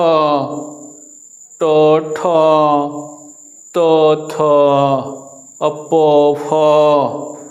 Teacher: इसको बोलने में कम आवाज लग रही है, इसलिए अघोष वर्ण कहे जाते हैं।